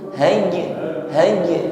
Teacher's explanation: huruf jim sukun kita tampakkan sifat qalqalah. Nah, kita pantulkan dengan pantulan ringan saja. Jangan tertahan.